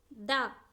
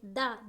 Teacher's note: ద అల్పప్రాణ నాదాత్మక దంత్యం ద ద అంటే మన దంతాలు టచ్ ఇచ్చేస్తుంది కదా అందుకే దంత్యం